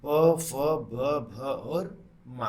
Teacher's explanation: ओष्ठ दोनों ओठों की मदद से प, फ, ब, भ और मा का उच्चारण करते हैं